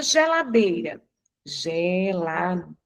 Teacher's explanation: Eu tenho aqui o dei, que eu pronuncio com mais intensidade. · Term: sílaba tônica